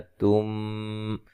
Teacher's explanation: یہاں میم ساکن کا ادغام ہے، غنہ کریں گے